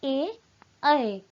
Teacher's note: इन स्वरों का उच्चारण कंठ और तालु दोनों ही स्थानों से किया जाता है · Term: कंठ तालव्य